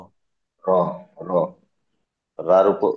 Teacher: রর উপরে জবর আছে, তাই রটিকে পুর করে পড়তে হয়।